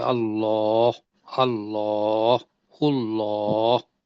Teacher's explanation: لیکن اگر زبر آ جاتی ہے، پیش آ جاتی ہے، تو اس کو لام کے اوپر کھڑی زبر ہے تو دو حرکت کے برابر بڑا بھی کرنا ہے اور تفخیم بھی کرنی ہے، یعنی کہ منہ کے اندر ہوا بھر کے · اللہ کو تھوڑا ہونٹ گول کر کے پڑھیں گے تو وہ موٹا نکلے گا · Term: موٹا پڑھنا